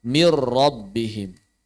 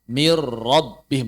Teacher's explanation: Dan idghamnya kamil, berarti nunnya hilang. Suara nunnya hilang, langsung masuk ke ro bertasydid. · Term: tanpa gunnah